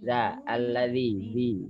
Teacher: zal itu yang nyentuh ujung lidah saja, nyentuh di gigi atas ya.